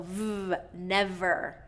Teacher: So we want to get that contact from the teeth onto the lips to get that clear v, and it's a friction sound, so v, never. And our voice is on through that.